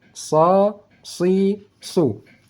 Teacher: Letak ujung lidah tetap sama, cuma membedakannya yaitu letak pangkal lidah naik ke langit. Saat kita membaca huruf sad, makanya bunyi suaranya, desis anginnya lebih tebal.